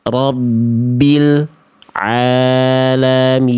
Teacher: Ya, lamnya memang tidak memantul tapi diputus suara L-nya. Jadi kayak ada jedah hening antara lam sukun dengan ain. Itu pun tidak boleh. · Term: Terputus, terputus